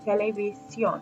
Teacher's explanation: So it would go something like televisión. But the word has evolved where the last syllable gets stressed. So we see the accent over the O, the strong vowel in that syllable, televisión.